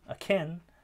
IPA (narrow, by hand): ə.kʰín